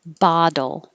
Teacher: but the dole is a very quick tap so my d my tongue is touching for the d i have to release it and put it back for the l it's very quick